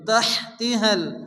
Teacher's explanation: বড় হা তার সঙ্গে সংযুক্ত করে মুখ দিয়ে বাতাস বের করে উচ্চারণ করে পড়তে হবে